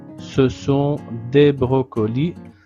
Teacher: Ce sont des brocolis sans prononcer le S final